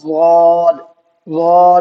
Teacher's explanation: ضاد کا مخرج ہے زبان کی کروٹ اوپر کی داڑھوں سے مل کر ادا ہوتا ہے